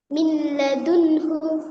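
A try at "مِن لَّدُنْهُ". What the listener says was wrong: মিন কেন হচ্ছে? তান, তান এই সাকিন তাসদিদ পাশাপাশি থাকলেও তাসদিদের গুরুত্ব বেশি। মিল্লা, মিল, মিম লামজের মিল, লাম জবরলা মিল্লা, দাল নুন, দাল নুন পেশ দুন, হা পেশ হু, মিল্লা দুন হু। এই একটার মধ্যে দুইটা রুলস আছে।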